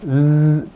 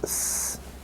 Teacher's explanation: when you take away the vibration, z becomes s. It becomes an S. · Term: loses its voicing